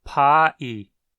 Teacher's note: O coreano pegou a palavra pie do inglês emprestada, mas em coreano ela é tratada como se tivesse 2 sílabas, pa-i. A divisão de sílabas às vezes nem é consenso dentro de uma mesma língua.